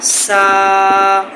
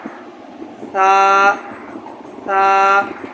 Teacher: ثا کی آواز سین کے ساتھ مشابہت بالکل نہ ہو۔ ثا ثا، اس کا مخرج ذہن میں رکھ لیں کہ زبان کی نوک یہ ثنایا علیہ، یہ سامنے والے جو دو دانت ہیں ان کو کہتے ہیں ثنایا علیہ، اس کے بالکل سرے سے لگے۔